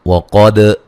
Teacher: قاف کو موٹا دال پہ قلقلہ کریں گے ، اولو، واد کو موٹا ادا کریں گے، لو و مدہ